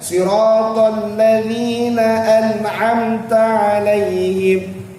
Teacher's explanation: Adapun huruf ta itu pada mim mati bertemu dengan ta tu, huruf ta tu tak payah kita duk buat keluar angin bagi banyak-banyak